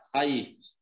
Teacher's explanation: A sílaba mais forte do hiato é o I, ó. A vogal tônica.